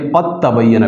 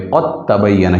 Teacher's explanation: क्योंकि दाल ता से बदल गया और ता का ता में इदगाम हो गया है